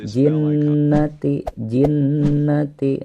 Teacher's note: Ditekan dan juga didengungkan dua harokat · Pada ayat ke-6 ini minal, nah di situ ada alif lam, ini disebut dengan alif lam qamariyah karena alif lamnya terbaca dengan jelas dan dimati ya, tidak ada tasydid.